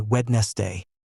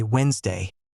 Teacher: The middle part, the NES, is completely gone, swallowed, erased from the spoken word while staying perfectly visible in the written one.